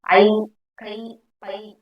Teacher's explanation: ஐகா எழுத்து வந்து தனித்து வரும்போது ரெண்டு மாத்திரை அளவுல ஒலிக்குது ஐ கை பை இப்படி எல்லாம் ஒலிக்கும்போது இது முழுமையா ஒலிக்குது சோ இதுக்கு